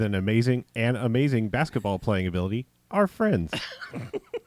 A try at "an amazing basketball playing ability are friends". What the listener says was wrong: There's no commas. I don't know why you're pausing. I mean, it's all just one sentence.